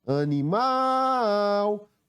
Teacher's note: na palavra animal a sílaba tônica é a sílaba que pronuncia com mais força é o mal